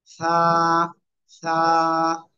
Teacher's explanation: জিহ্বার আগা সামনের উপরের দুই দাঁতের আগার সাথে লাগিয়ে নরম করে হালকা বাতাস বের করে এক আলিফ টানে উচ্চারণ করতে হবে।